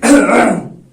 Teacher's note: जब मैं अंदर एयर ले रहा हूं, इनहेल कर रहा हूं, तो जो मैं साउंड निकाल रहा हूं, इसको बोलते हैं इनग्रेसिव